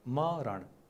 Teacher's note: हामी यो अणको उच्चारण बोल्ने बेलामा धेरै ठाउँमा हामी न भन्छौँ है